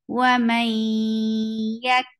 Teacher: Wa may yak yak. And this merging is with gunna. So you keep the sound in your nose. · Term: idgham with gunna